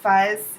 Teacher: instead of the th he made an F sound